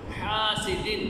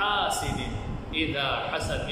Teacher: حا یہ گلے سے نکلے گا